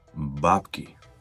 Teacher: it's very important to put the stressed syllable on the first vowel sound.